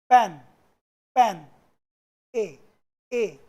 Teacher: मुंह खुलने की जो स्थिति थी वो चेंज हो रही है, कम और ज्यादा, और ज्यादा, और ज्यादा, फुल।